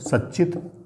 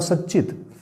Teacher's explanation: अतः स्तोष्टुनाश्चुः के नियम के अनुसार सत प्लस चित बराबर क्या हो जाएगा, इस तकार के स्थान पर भी चकार हो जाएगा। तो स और च आधा कर दो और चित आगे लिख दो, सच्चित।